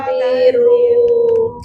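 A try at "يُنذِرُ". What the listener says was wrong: Ha kasi lembut sikit eh. Lembut sikit eh. Yang tu macam nak pergi perang.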